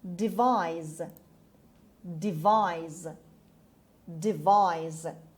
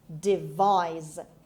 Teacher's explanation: The stress is on the second syllable. It's on V. Devise. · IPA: /dɪˈvaɪz/